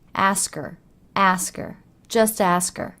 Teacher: It's common practice in English to drop the H in words like her, his, him. So her becomes er.